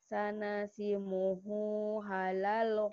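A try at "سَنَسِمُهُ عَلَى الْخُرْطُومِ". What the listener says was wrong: Alal. Alal bukan halal. Hurtum. Sanasimuhu alal khurtum.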